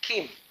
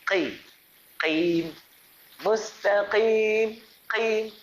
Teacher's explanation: Huruf kaf dia hamas. Huruf qaf dia tebal.